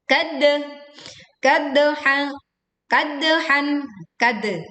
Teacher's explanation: dal sukun dibaca memantul. Dan suaranya miring dengan pantulan yang terdengar kuat